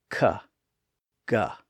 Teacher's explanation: So for example, the sounds that we associate with the letters K and G are produced in the back of the mouth by briefly closing the vocal tract there and then releasing the air to make the sound